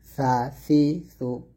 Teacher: সা, সাটা পাতলা হবে, জিহ্বার আগা সামনের উপরের দুই দাঁতের আগার সঙ্গে লাগিয়ে সা পাতলা উচ্চারণ করবেন।